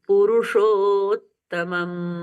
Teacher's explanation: तो यहां पर डबल त हो गया तो ये आधा त मिस नहीं होता है